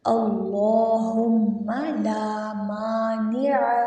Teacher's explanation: عین کو کھینچیں گے نہیں، بغیر کھینچے پڑھیں گے